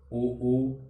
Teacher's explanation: उ का उच्चारण करते समय हमारे स्वर यंत्र में जो हलचल है वो ओठों में होती है खासकर। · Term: औष्ठ्य स्वर